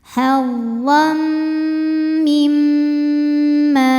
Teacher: Karena ada tanwin fathah menghadapi huruf mim, maka tanwin masuk ke mim. Hadam disertai bunyi dengung. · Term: idgham bunah, idgham bi gunnah